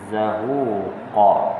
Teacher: Tapi bila mana berbaris tidak bersabdu, maka zahuqa, bunyi juga desir tu, tapi tidaklah kuat seperti yang bersabdu ataupun bertasydid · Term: adhaf